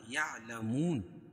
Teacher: واو ساکن سے پہلے پیش ہو تو واو مدہ اس کو ایک الف کے برابر کھینچ کے پڑھیں گے اور وقف کی صورت میں یا مد عارض وقفی ہوگا.